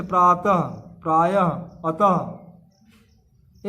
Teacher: देखिए आपको ऊपर बताया गया योगा में विसर्ग का उच्चारण ह की तरह होता है। विसर्ग का उच्चारण जो है ह की तरह होता है।